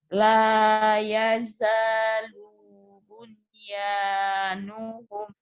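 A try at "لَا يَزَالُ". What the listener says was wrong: lu-nya pendek. panjang pendeknya harus mulai dilatih nih. Yang panjang kependekan. lanya panjang. Iya, zanya panjang, lu-nya pendek, ini ketukar. Lu-nya pendek, lu-nya pendek, lu-nya pendek.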